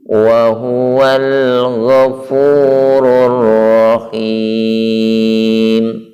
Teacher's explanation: Perhatikan ketika alif lam bertemu dengan huruf ghain, maka alnya terbaca jelas, tidak menghentak, dan ada sifat tawasudnya